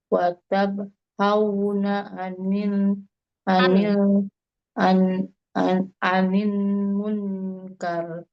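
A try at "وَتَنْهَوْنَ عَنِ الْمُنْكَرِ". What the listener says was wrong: Ulangi, watan ya, bukan watab. Watanhauna 'anil munkar.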